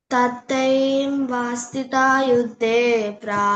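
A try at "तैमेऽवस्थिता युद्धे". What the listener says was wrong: మళ్ళీ చెప్పు first letter. ఐం కాదు, ఇమే.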